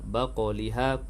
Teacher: qaf yang sukun dalam kalimah tersebut qalqalah sughra, berdetak pada qaf yang sukun